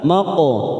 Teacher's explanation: huruf qaf sukun namanya qalqalah sugro, kita pantulkan